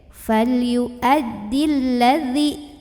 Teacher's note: Ya sukun sebelumnya kasrah. Nah, tapi apabila kita tidak berhenti, mad tabi'i ini gugur. Dzalnya dibaca pendek. Falyu'addil ladzi, langsung ke huruf yang sukun.